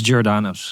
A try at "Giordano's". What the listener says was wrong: And and the funny thing is, like you guys are pronouncing it like the way Chicagoans say it, which is they actually pronounce it with a G, like Giordano's, Because the proper pronunciation of that in Italian, and I have an Italian background, is Giordano's. It's like a J sound, right? But here in Chicago, everyone's like Giordano's.